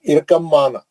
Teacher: अब बा नहीं पढ़ेंगे, बा साकिन है ना, छोड़ देंगे। इरकम, सीधा मीम में चले जाएंगे, गुन्ना करके पढ़ेंगे। इरकम माना, बा नहीं पढ़ेंगे, बा का इदगाम हो गया, समझेंगे।